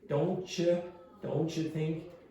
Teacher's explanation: So if you have don't, the T and the y combination are going to produce ch.